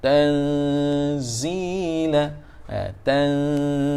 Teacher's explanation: Kita sebut tanzila. Jadi huruf nun yang mati itu diikhfakan, disembunyikan, yakni dengan makna hujung lidah jangan disentuh ke langit-langit hadapan, dan dia cenderung nak pergi kepada huruf zai, yang mana huruf zai hujung lidah tekan ke gusi gigi gunting sebelah bawah. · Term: ikhfa hakiki